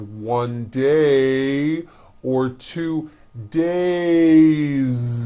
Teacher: have one day or two days it's not days on voice it's days with a voiced Z ending